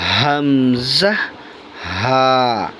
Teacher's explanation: 1 number মাখরাজ, হলকের শুরু হইতে।